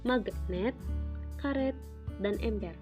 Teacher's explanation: direalisasikan seperti bunyi E besar apabila berada pada silabel tertutup